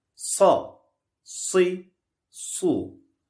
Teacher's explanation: hiçbir yere temas ettirilmeden kabartması ile ıslık şeklinde çıkan bir harftir kalındır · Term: Sad harfi